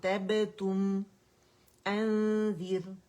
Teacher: را سکون سے پہلے اوریجنل کسرہ ہے، را باریک پڑی جائے گی.